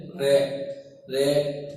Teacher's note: जब उच्चारण किया जाता है तो हमारी जीभ है वो कंपन करती है, इसलिए इसे लुंठित या कंपन जात भी कहा जाता है।